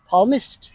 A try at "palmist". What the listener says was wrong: এইখানে কিন্তু পালমিস্ট হবে না, একটু ভুল করেছে, এটা একটা সাইলেন্ট এল লেটার ওয়ার্ড, বলতে হবে পালমিস্ট। পামিস্ট।